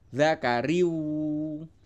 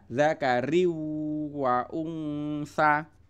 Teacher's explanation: Kemudian di sini ada tanwin bertemu wawu, itu bacanya adalah idgham bihunnah, yaitu tanwinnya dimasukkan ke huruf wawu kemudian dibaca sambil dengung